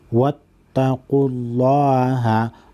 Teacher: لفظ اللہ کو موٹا پڑھیں گے کیونکہ اس کے بعد اس سے پہلے والے حرف پر پیش ہے